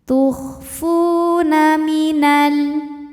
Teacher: Fu dihukumi dengan mad tabi'i dhahiri. Sebab ada waw sukun yang sebelumnya berbaris dhammah, maka huruf fa panjang 2 harokat.